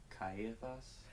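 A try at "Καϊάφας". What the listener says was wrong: So Ka-E-aphas. So you don't say Caiaphas. It's Ka-E-aphas.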